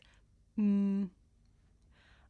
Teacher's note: this is a consonant sound it's pronounced um I make this sound by closing my lips and letting the sound come through my nose